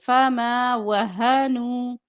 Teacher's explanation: نون پیش واو نون واو مدہ لمبا کریں گے